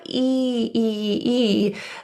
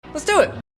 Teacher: We want to pull our tongue a little lower to create a more relaxed e sound. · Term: short e sound